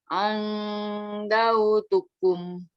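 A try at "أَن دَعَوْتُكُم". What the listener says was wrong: Da'au. Da'au. Ada ainnya.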